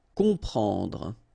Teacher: so you will get the sound on, nasal, okay? You don't hear any M here, okay? It's on.